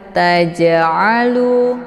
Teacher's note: Cara bacanya, jimnya dipantulkan dengan pantulan ringan. Taja'alu, keluar bunyi je.